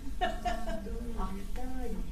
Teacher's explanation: So we gotta say it with conviction, so we don't do the rising tone thing.